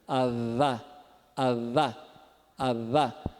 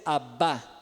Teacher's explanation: Você quase encosta os lábios, mas não encosta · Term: fricativo plano bilabial